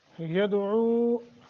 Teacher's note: दाल साकिन है, कलकला करेंगे। ऊ हरूफ मद्दा है, 1 सेकंड के लिए मद करेंगे।